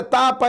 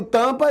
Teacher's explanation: Mas o M nasaliza. Aí eu tenho an.